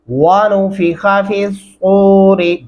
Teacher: फी सूरी, फा ज़ेर साद फी, स्वाद पेश वाव, सूर ज़री, फी सूरी। वाव पढ़ते हुए हमारे होंठ गोल होने चाहिए हमेशा और ख्वा को लंबा नहीं करना